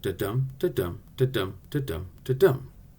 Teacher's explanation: that's a total of 10 syllables with the accent or stress on the 2nd 4th 6th 8th and 10th syllables every other one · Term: iambic pentameter